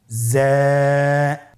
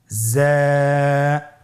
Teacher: হরফটি বারিক হরফ এজন্য পাতলা করে উচ্চারণ করতে হবে হরফটির মাখরাজ আপনারা দেখতে পাচ্ছেন জিহ্বার আগা সামনের নিচের দুই দাঁতের পেট ও আগার সঙ্গে লাগিয়ে উচ্চারিত হয়।